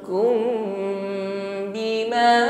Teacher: Mim sukun bertemu ba, ikhfa syafawi, bibir rapat dan dengungkan.